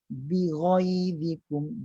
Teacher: Ghai itu rendah. Sedangkan ghin ni ada sifat isti'la, tinggi pangkal lidah.